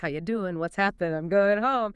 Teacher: It's a shift from a velar nasal to an alveolar nasal N.